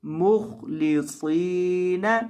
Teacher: लियअबुदुल्लाह मुखलिसीन, खौ को भी और सौद को भी दोनों को आपने मोटा करना है